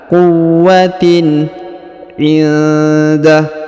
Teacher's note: huruf tanwin in dibaca jelas ya, izhar. Quwwatin indah.